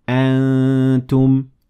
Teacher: my mouth is taking the shape of ta while I'm letting air through my nasal cavity to make it sound like this. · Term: ikhfa